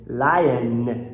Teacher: Todo N no final de palavra você tem que, ó, lion. Você acaba com um schwa mais um N.